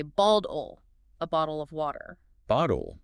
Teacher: the double T in the middle of the word is usually softened. It becomes what linguists call an alveolar flap. It sounds very close to a fast D sound. An American will say bald-ol, a bottle of water.